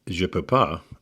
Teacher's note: But in spoken French, the ne is typically dropped